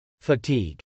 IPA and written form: fətˈig (fatigue)